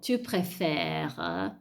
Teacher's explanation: io mi fermo a préfère, a sentire la R, perché la E poi è muta, quindi cade